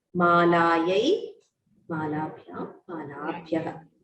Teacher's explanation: make sure that all the dirgha swaras are pronounced fully